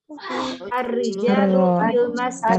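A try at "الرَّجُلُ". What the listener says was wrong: Nah, bacanya yang betul ar-rijalu apa ar-rajulu? Kalau ar-rijal begini nulisnya ya. Nah, kalau ar-rijal begini ya. Jangan salah baca. Ini ada di jimnya ditambah alif panjang. Ar-rajulu. Artinya beda kalau ar-rajul ini sendirian. Tunggal, kalau ini jamak.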